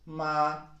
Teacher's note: It starts high and it keeps on being high. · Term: first one